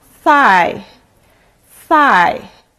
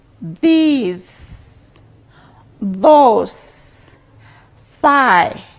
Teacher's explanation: you notice that the initial sounds of those words uh the tongue touches the upper side of the teeth